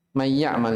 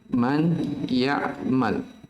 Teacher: Dikatakan bigunnah karena ketika dibaca dia digunnah sekitar 2 harokat. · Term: Idgham bigunnah